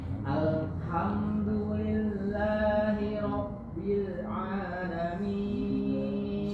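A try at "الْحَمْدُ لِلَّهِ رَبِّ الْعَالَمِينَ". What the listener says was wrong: Sudah bagus tapi nggak boleh putus Pak. Harus ngalir, nggak boleh Alhamdulillahi Rabbil Alamin.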